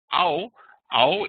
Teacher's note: the vowels and then there's the the ow ow is again it is a sliding sound like this between the A and the U